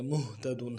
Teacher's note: وهم مهتدون نہیں پڑھیں گے نرمی سے ادا کریں گے مهتدون ہا کو واضح کریں گے عموماً ہا کو گہرائی سے ادا کیا جاتا ہے ایسا نہیں کریں گے